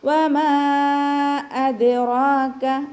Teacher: ദാല് കൽക്കലയുടെ ലെറ്ററാണല്ലോ, അപ്പോൾ നമ്മൾ സുക്കൂൻ ആയതുകൊണ്ട് ഫുൾ സുക്കൂന് കൊടുക്കുക · റോ ഫത്തഹ ആയതുകൊണ്ട് ഉയർത്തിയിട്ട് ഉച്ചരിക്കുക. ചെറിയ അലിഫ് സ്വഗൈറ കൂടെ വന്നിട്ടുണ്ട്, അപ്പോൾ 2 കൗണ്ട് നീട്ടിക്കൊടുക്കുക. · വാവ് ചുണ്ടുകളൊന്ന് വട്ടത്തിൽ പിടിച്ചിട്ട് ഉച്ചരിക്കുക. മീമിൻ്റെ കൂടെ മദ് വന്നു, ആ മദ്ദിന് ശേഷം അടുത്ത വേർഡിലായിട്ട് ഹംസയും വന്നു, അപ്പോൾ നമ്മൾ 2 or 4 ഹർക്കത്ത് നീട്ടിക്കൊടുക്കണം കേട്ടോ. മദ് ജായിസ് മുൻഫസിൽ.